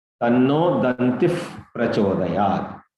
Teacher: The Visarga will produce one F sound.